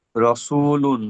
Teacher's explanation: র এর উপরে জবার এসছে জবারটি পুর হবে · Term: র পুর